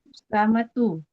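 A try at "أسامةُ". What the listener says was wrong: Ya, boleh. Ya, bagus.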